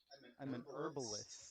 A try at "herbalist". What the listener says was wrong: you say herb and we say herb because there's a fucking H in it.